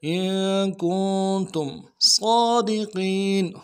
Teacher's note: صاد کے اوپر کھڑا زبر ہے، ایک الف دال میں کھینچیں گے، صاد کو موٹا کریں گے